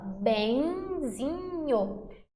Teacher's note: Essa junção do E nasalizado com o I. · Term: ditongo nasal